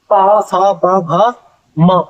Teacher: अब ओष्ठ की बात करें, आप जो भी पा सा पा भा मा अगर बोलोगे तो आप देख लो कि आपके जो होठ है वो आपस में दोनों स्पर्श करते हैं, टकराते हैं